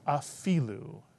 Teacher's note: Put the word together, afilu. And the accent is on the fi, afilu.